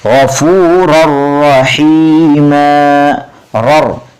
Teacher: یہاں پر ہم نے جو ہے میں ربک کا پڑھا، اب دیکھیے غفور الرحیم، رر، دیکھیے 2 زبر تنوین کے بعد پھر را آ رہا ہے، جس کی وجہ سے یہاں پر ادغام کریں گے، یعنی را آیا ہے 2 زبر تنوین کے بعد، اس لیے بغیر گنہ کے ملا کر پڑھیں گے